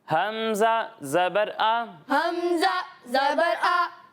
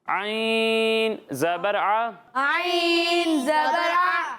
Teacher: جب ہم حمزہ کی ادائیگی کریں گے تو اسے حلق کے نیچے والے حصے سے ادا کریں گے اور جب ہم عین کی ادائیگی کریں گے تو اسے حلق کے درمیان والے حصے سے ادا کریں گے. یعنی اسے پڑھیں گے عین زبر آ, عین زبر آ, اور اسے پڑھیں گے حمزہ زبر آ.